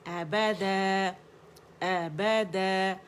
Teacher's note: فار throat سے، اینڈ با دونوں ہونٹوں کے گیلے حصے سے، ٹھیک ہے۔ ابدا، الف مدہ میں بدل گیا، ٹھیک ہے۔